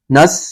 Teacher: حروف مستعلیہ تو پر پڑھیں گے اور صاد سیٹی کی طرح اس میں آواز نکالیں گے